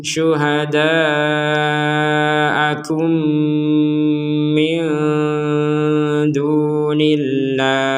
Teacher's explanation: mim mati bertemu mim, diperkuat dengan adanya tasydid, maka ini dibacanya dengung